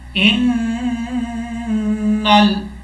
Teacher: قل ان الہدا، حمزہ کو نون سے ملائیں گے. نون کے اوپر شد ہے، شد کی وجہ سے غنہ کیا جائے گا